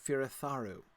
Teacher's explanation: Because if it were a the sound, it would be a DH, right? So the TH is always unvoiced in Elvish.